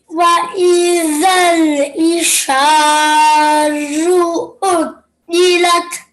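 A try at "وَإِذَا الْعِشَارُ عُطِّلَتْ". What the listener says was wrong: I could hear the nice ayn sound here, but I couldn't really hear the ayn sound there. So just remember, where does the sound of the ayn come from? Middle, absolutely, middle of the throat.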